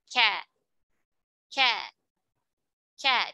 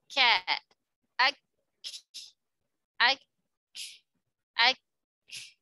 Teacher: Nah, kalau tadi qaf ya, di sini ya, pangkal lidah bertemu langit-langit yang lunak, maka kaf dia ke atas lagi ya, fauku, ke atas lagi, yaitu pangkal lidah bertemu langit-langit lunak dan keras sekaligus ya. Sedikit di bawah makhrajnya huruf qaf, maksudnya di bawah itu agak ke depan ya. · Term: huruf kaf